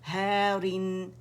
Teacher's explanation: را جو ہے کسرتین ہے تو باریکی سے ادا کریں گے